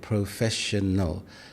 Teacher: Cristiano often gives equal weight to each syllable. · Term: syllable timed